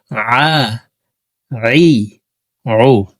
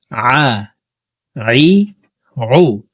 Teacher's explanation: হলকের মধ্যখান থেকে আইন হরফের উচ্চারণ করব।